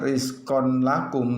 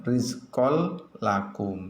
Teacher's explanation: Jadi tanwinnya dimasukkan ke dalam lam. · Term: idgham bila guna